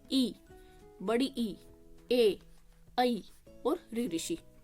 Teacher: देखो, ई, बड़ी ई, ए, ऐ और ऋ ऋषि यूज हुए ना। अपनी जो जीभ का आगे वाला हिस्सा है वो ज्यादा यूज हुआ। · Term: अग्र स्वर